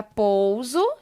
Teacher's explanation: quando a letra s é colocada entre duas vogais ela produz o som da letra z